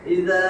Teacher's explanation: জবরের পরে খালি আলিফ মদের হরফ, এক আলিফ টাইনা পড়বো, পরে আসছেন গোল হামজা, 4 আলিফ টানতে হয়।